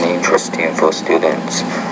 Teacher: Okay, now also with your intonation, you have to work on varying your tone. You're speaking in pretty much a monotone.